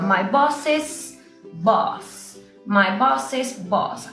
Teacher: Hay un sonido extra en la parte oral. Cuando yo digo my bosses, estoy agregándole casi como una I a ese sonido.